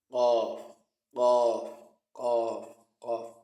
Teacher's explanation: Qaf is pronounced from the deepest parts, deepest part of the tongue.